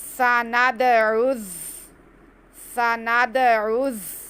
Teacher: दाल साकिन, दाल पे कलकला होगा। उसके बाद आइन को हमने ज़ा से मिलाना है, ज़ा हमने सिटी के साथ अदा करना है।